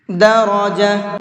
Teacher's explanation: را کو منہ بھر کے پڑھیں گے